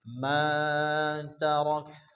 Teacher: যদি আমরা এখানে থামি তাহলে এই কাফটি কি হবে? সাকিন হবে।